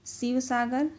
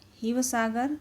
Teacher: असम के जो लोग थे ना, वो श को, तालव्य वाले श को वो ह बोलते थे